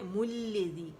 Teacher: زی آواز دو کاؤنٹ کے لیے نیچے جائے گی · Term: مد اصلی مد طبیعی